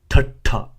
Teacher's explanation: it is an aspirated T A sound, and the T is strong, so I'll illustrate that with a dot below it.